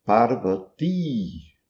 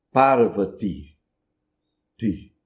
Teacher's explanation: no final, um i curto, fraco